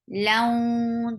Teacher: Ka, laun, this is idgham with gunna. You are merging tanween into waw, and you're keeping the sound in your nose. Laun, and for fatha is very short, and circle your lips to pronounce waw.